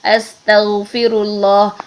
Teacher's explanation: کہ آواز نے نرمی کے ساتھ جاری ہی رہنا ہے، تو غین میں رکھنا تو آواز کو جاری ہے لیکن اس کی بیس جو ہے وہ ساؤنڈ ہے، اس میں سانس والی بیس نہیں ہوگی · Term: رخوت